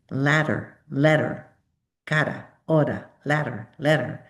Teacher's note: It's called a flap. Your tongue flaps up and down.